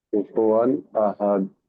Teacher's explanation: ওর উপরে জি দুজাবার তানবিন আছে, তানবিনের পরে এখানে হামজা এসছে, তাই হামজা হরফে হালকি 6টি অক্ষর, হামজা হা আইন হা গাইন কা, হামজা প্রথমেই এসছে, তাই এই তানবিনের আওয়াজকে আমরা জি বিনা গুণায় জাহির করে পড়বো। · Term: ইজাহার